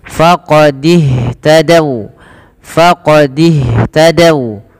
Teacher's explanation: Kemudian pada lafal faqadih tadau, ini hati-hati teman-teman, jangan membaca faqadih tadau, ini tanda ini tidak dibaca alifnya dan dia langsung disegerakan kepada huruf setelahnya, yaitu kepada huruf ha. Maka dan ha alirkan nafasnya karena sifat hamas